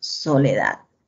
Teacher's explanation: Y esa sílaba que se pronuncia con mayor fuerza de voz se le denomina sílaba tónica, soledad. La sílaba da se pronuncia con mayor fuerza de voz. Y las otras sílabas son las sílabas átonas.